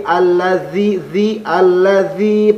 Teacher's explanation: Alladzi, dzi panjang. Dza pengucapannya bukan da.